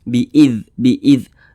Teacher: makharijul huruf zal itu keluar dari ujung lidah, dari arah punggungnya dan menempel pada ujung 2 gigi seri atas